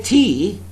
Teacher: When I say tea, there is aspiration.